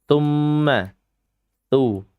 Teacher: Dia keluar dari makhraj lidah. Dan tepatnya dia ada di ujung lidah.